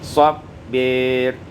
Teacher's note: imalatu fathatil ba wal alif, diimalakan fathah ba dan alif menjadi sabbir.